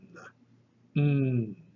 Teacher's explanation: But the letter ni is a dental nasal. · put your tongue against the teeth to seal them off so no air flows through. But you allow the air to flow through the nasal cavity.